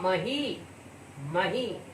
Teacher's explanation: मही ई कहने पर जोर पड़ता है, इसलिए दीर्घ ई हुआ है